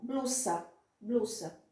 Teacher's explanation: o S você vai sempre pronunciar suave, como se fossem dois S